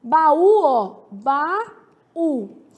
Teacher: baú é oxítona, porque tem como sílaba tônica a última